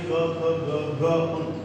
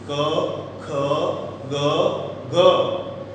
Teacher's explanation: ખાસ યાદ રાખશો, કંઠ્ય એટલે શું? તો કે કંઠ્ય કહેતા ગળું, ગળામાં હવાને અવરોધવામાં આવે અને જે વ્યંજન બોલાય એ કંઠ્ય વ્યંજન તરીકે ઓળખાય